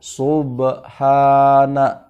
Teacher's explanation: subhana itu adalah 2 ketukan saja bacaan panjangnya